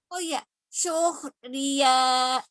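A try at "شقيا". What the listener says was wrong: Iya-nya pakai tasdid.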